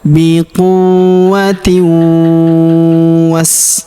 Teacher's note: Kemudian tanwin in huruf tin ya, tak marbutah, bertemu huruf waw, maka tanwin innya melebur ke huruf waw. Kita dengungkan ya dan kita tahan dengungnya 2-3 harokat.